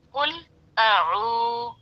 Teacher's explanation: वाव मद्दा को एक अलिफ के बराबर खींच कर पढ़ते हैं। कुल अऊ, अ और ऊ की अदायगी में फर्क होना चाहिए।